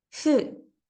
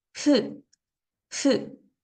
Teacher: la U se pronuncia de manera que nuestros labios están de manera alargada, como si pronunciáramos la L. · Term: sonido de shu